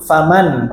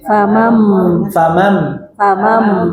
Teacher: Tapi ketika baca bertemu dengan ba, dirubah nunnya jadi mim. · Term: iqlab